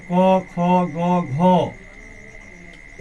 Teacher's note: क, ख, ग, घ ये हो गया आपको जो कंठ से उच्चारण किया जाता है।